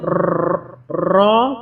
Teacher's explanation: मखरज रॉ का किनारा ज़बान और मसूड़े, जैसे हम रॉ बोलते हैं तो ज़बान हमारी जो है मसूड़ों से ज़्यादा पर लगती है और फिर रॉ अदा होता है।